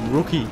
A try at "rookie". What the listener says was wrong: You say rookie. Rookie. Rookie. But it sounds weird when you say rookie. It sounds like you're saying root and key at the same time. That's a rude key.